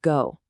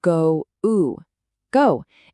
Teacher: A lot of learners say a flat go, but it actually glides from O to U. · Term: diphthong